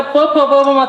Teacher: प चा उच्चार करताना बरोबर दोघी ओठांचा आपण वापर करतो बरोबर आहे. मग प फ ब भ म या सगळ्यांचाच उच्चार 2 ओठांनी करता येतोय.